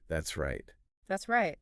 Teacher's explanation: That's right, the stress. The emphasis is usually on right.